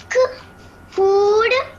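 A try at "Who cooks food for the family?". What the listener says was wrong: यस, आप अब LKG UKG में नहीं हो ना, सो बच्चों के जैसे नहीं रीडिंग करनी, ऐसे वर्ड्स को खींचते नहीं है, स्ट्रेच नहीं करते। फिर से आप वैसे ही बोल रहे हो।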